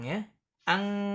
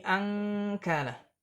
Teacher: karena makhrajnya jauh antara kaf dengan nun, maka dibacanya juga ang, ya.